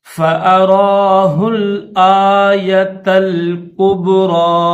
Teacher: کاف کے بعد با ہے اور با حروف قلقلہ میں سے تو اس کو ظاہر کر کے پڑھیں گے،